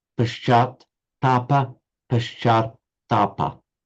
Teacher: so you've got to get the long a and also the double t